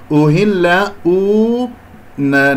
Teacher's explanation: أهل نضم الشفتين في الهمزة، الهاء دائما أقول لا تخرج الهاء صدرية أحبتي في الله، الهاء من منطقة أقصى الحلق باهتزاز الأوتار الصوتية